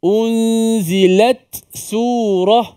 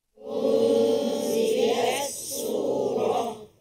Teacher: tak ditenggelamkan dalam Sin tak diidghamkan sini tidak boleh baca Idam Imam kita baca secara izhar maksudnya ta kena jelas bunyi Matinya